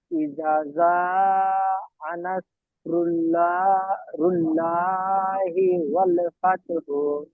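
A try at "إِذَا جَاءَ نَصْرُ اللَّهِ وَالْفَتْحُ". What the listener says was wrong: ওয়াল ফাতহু নেই। ইদা জাআ নাসরুল্লাহি ওয়াল ফাত। নেই। হ্যাঁ, ওয়াল ফাত।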